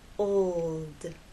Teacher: l sound you must keep it pressed against that bump and there should be vibration the whole time from the o to the L and finally into the D old it's important to make the L long enough so that